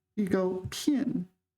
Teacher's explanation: pin is fourth tone in this word